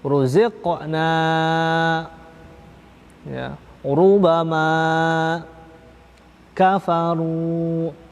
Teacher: Ro berharokat domah juga dibaca at-tafkhim atau tebal